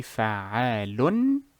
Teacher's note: Normally you will say fa'alun. You enunciate the noon in the tanween.